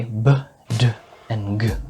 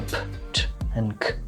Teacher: You shouldn’t able to feel this for ‘p’, ‘t’ and ‘k’. We call ‘b’, ‘d’ and ‘g’ voiced, while ‘p’, ‘t’ and ‘k’ are voiceless. This distinction is called voicing and it contrasts a lot of different sounds from each other in English , as we’ll see later.